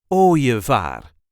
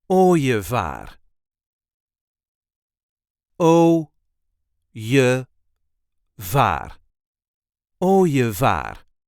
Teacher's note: So the IE, the E, is here pronounced as a j, ooievaar. There is a light emphasis on the first syllable, ooievaar.